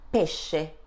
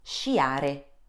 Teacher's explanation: In this case, the sound produced is sh, as in the English word ship.